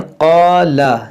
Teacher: ये क़ाफ मुहर्रफ मुस्तालिया है, मोटा करेंगे, और अलिफ मद्दा है, इसको खींचेंगे, लाम को नहीं खींचेंगे।